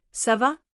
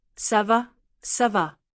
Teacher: Is very short, very clipped, ça va, almost like one word. Practice hearing that, ça va, ça va.